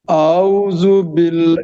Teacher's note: باریک موٹا نہیں کرنا، باریک پڑھنا ہے باللہ کو، جی جی کیونکہ لام سے پہلے زیر ہے